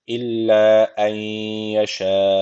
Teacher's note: Allah lafzı burada kalın okunacak. Çünkü öncesindeki harfin harekesi üstte yani Allah lafzına üstten giriş yapılmış.